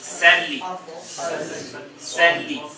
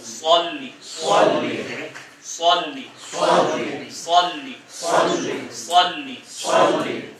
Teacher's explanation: سین کا تلفظ باریک ہے، مطلب صاد کا تلفظ پرحجم ہے، بھاری ہے. یہ دیکھیں، یہ صاد آگے، یہ صاد موٹے حروف میں سے، سین باریک، صاد پرحجم.